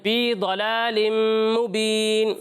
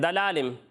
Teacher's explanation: ضاد کو پر پڑھنا ہے، باریک نہیں پڑھنا